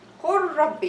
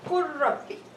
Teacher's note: So the lam merged into the ra completely. I don't feel there is lam when I say Qul Rabbi. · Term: complete idghaam